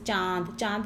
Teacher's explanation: एक साथ आती है उसको अनुनासिक कहते हैं जैसे चांद चांद बोलते समय आवाज जो है आ वाली आवाज नाक और मुंह से एक साथ आ रही है